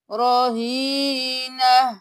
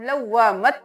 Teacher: لیجئے، رہینہ، یہاں پہ ہم نون زبر ہا نہ کریں گے، یہاں پر ہم تا کو ہا میں بدل دیں گے اور تنوین بھی ختم ہو جائے گی۔ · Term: تا ہا میں بدل